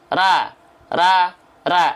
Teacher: Bunyinya pasti dominan A. Kenapa? Karena pangkal lidahnya belum naik.